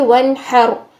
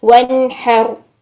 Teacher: نون ساکن کے بعد ہا آ رہا ہے تو ہم آواز کو ظاہر کریں گے, نون کا اظہار کریں گے. ہا حروف حلقی میں سے ہے.